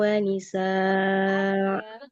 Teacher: Kalau tanwin fathah pada hamzah di akhir dibaca panjang.